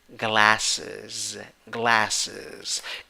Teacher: syllable you also have the a that laughs okay and in the second syllable you have schwa and you have z at the end · you have schwa and you have z at the end you when you write it you have s at the end but when you pronounce it you have z at the end